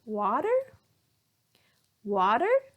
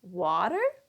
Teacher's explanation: So we'll raise our intonation here. The pitch will go up.